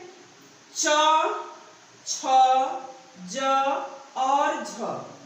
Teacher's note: ये 4 वर्ण च, छ, ज, झ स्पर्श संघर्षी वर्ण कहे जाते हैं।